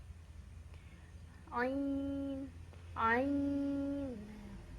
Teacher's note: Sedikit berbeda dari huruf yang lain yang dibaca 6 harokat. Ain di sini pas dibacanya a-nya satu ayunan, satu ketukan atau satu harokat.